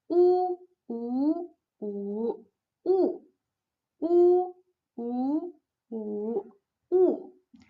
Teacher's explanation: Next one, U. The opening of the mouth is narrow. The lips are fully rounded, and the tongue position is high and slightly to the back. It sounds like U, a woman.